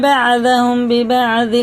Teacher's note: میم ساکن کے بعد اگر با آ جاتا ہے نا تو اخفا شفی ہوتا ہے